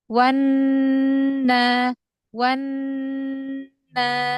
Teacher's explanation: Oh ya tidak i wan naik-naik turun mat gunah itu harus satu nada. Satu nada aja jangan naik turun naik turun malah lebih mudah kalau satu nada aja.